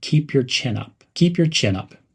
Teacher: Link the words keep and your. Keep your. Also, emphasize the word chin.